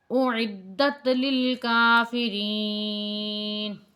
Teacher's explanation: دال جو ہے یہ تا کے ساتھ ملا کے پڑھی جائے گی